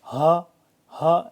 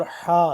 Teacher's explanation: اور اس ہا میں فرق کرنا ہے، یہ بس یہ سمپل یہ سینے سے نکلے گی جیسے ہوا نکل جاتی ہے، ہا ہا ایسے آسانی سے۔ اور حا یہ حلق سے نکالنا ہے ہم نے